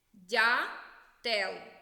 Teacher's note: дятел перший склад наголошений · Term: наголошений склад